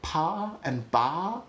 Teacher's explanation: pa and ba are both bilabial plosives. So like when I say pa and ba, my lips are doing exactly the same thing.